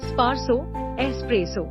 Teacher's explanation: there's no X in espresso. Think of the word as starting with an S sound.